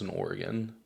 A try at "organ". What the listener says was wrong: You said it like the place. Organ. Organ. You said Oregon.